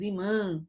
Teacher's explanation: mostrar para a gente que o som ele é nasal ele sai pelo nariz